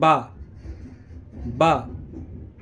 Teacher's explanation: बे यानी कि बे में दोनों होट मिलेंगे